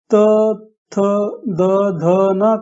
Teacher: तब जीभ सामने के ऊपर के दांतों को छूती है